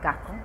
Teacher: pronuncia la letra s como una J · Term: cubanismo